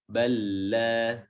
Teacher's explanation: tidak ada gunnah, tidak ada sifat-sifat tambahan yang lain, murni tasydid atau idgham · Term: idgham mutamathilain